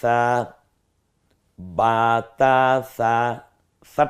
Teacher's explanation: নরম আওয়াজে জিহ্বার আগা সামনের দাঁতের লাগার সাথে মিলালেই নরম হয়ে যাবে